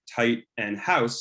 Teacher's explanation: the raising of the tongue in the mouth when you say words like tight and house specifically these vowels occurring before voiceless consonants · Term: canadian raising